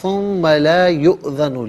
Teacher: حمزہ ساکن ہے تو حمزہ کو جھٹکے کے ساتھ ادا کیا جائے گا